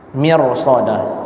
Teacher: Ro sukun sebelumnya kasrah seharusnya dibaca tipis tapi karena setelahnya ada huruf istilla dibaca tebal